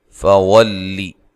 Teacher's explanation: لام کو باریک ادا کرنا ہے اور لمبا بھی نہیں کرنا